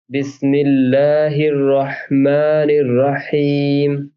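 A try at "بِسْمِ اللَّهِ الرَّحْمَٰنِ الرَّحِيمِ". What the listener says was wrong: माँ माँ ये हो रहा है, नाक से आ रहा है, तो वो उतना नहीं आना चाहिए, है ना, क्योंकि वो फिर आपको लॉन्ग टर्म में इफेक्ट करेगा।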